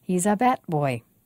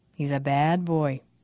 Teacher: be sure to make the vowel longer in the second sentence of each pair